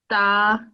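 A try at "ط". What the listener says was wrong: To. This is thick. To. You remember this ta is this third letter that will be just ta, simple, soft, mild ta.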